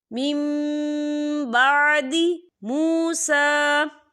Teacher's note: یہاں پر اقلاب ہوگا یعنی تبدیلی ہوگی. ہم پچھلے میم کو اگلے میم کے ساتھ ملا کر پڑھیں گے اور یہاں پر غنہ بھی ہوگا.